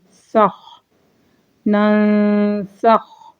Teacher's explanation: یہاں پہ اقفا بھی ہو رہا ہے اور خا پہ ہمس ہو رہا ہے